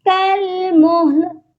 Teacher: کاف کو لام کے ساتھ ملا دیں گے، الف کو ہم نہیں پڑھیں گے